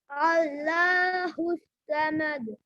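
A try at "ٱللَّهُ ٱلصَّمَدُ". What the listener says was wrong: समद नहीं, सोमद, हाथ से रखिए।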